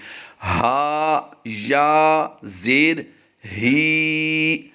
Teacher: اس وقت جو 3 لفظ آپ اپنی اسکرین پر دیکھ رہے ہیں، پہلا ہا ہے حلق کے نیچے والے حصے سے، یعنی سینے کی جانب جو حلق کا حصہ ہوتا ہے اس حصے سے ادا کریں گے